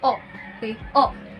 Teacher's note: It is a closed mid-back rounded vowel.